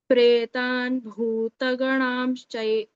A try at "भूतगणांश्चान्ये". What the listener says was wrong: That Bhuta. The Bhuta, you missed that Mahaprana. Once again.